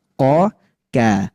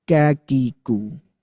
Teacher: Bedanya tadi, kalau huruf Qaf dia masuk ke bagian yang lunak, keras, dinding yang lunak. Kalau yang huruf kaf dia masuk ke bagian yang keras.